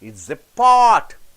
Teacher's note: Pot you have to stress because it's a noun.